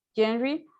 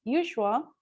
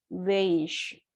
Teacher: It's a voiced sound. It's a fricative. Also, it's a palatal or post-alveolar, and we can find it at the initial sound of the word genre, and the medial sound of the word usual, and the final sound of the word beige.